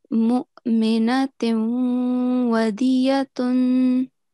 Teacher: instead of the sound of noon, which comes from a tanween, we only make the nasal sound for 2 seconds. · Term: partial assimilation